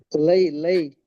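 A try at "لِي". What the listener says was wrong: இல்ல, லை என்று சொன்னா ஃபத்ஹத்து நீக்கணும் லாக்கு மேல. ஆ லீ தான் வரணும்.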